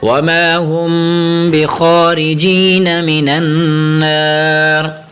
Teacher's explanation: را کی زیر نہیں پڑھیں گے را کو ساکن کر دیں گے را کو زیر کو ختم کر کے را کو ساکن کریں گے.